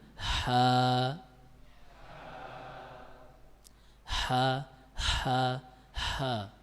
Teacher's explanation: ketika kita mengucapkan huruf H dan Ain epiglotis ini sedikit menghimpit dinding belakang rongga tenggorokan